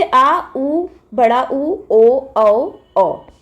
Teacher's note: पश्च स्वर यानी कि जीभ के पीछे का भाग, जब पीछे के भाग की सहायता से जो वर्ण उच्चारित होते हैं